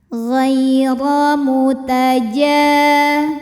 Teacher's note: Maka cara bacanya cukup kita lembutkan atau kita lunakan saja. Ghaira, huruf ra dibunyikan secara tafkhim karena ra dibarisi fathah. Maka cara membacanya adalah ditebalkan, pangkal lidah naikkan